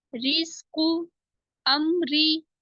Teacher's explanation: अगर रा के नीचे जेर है तो हम इसको बारीक पढ़ेंगे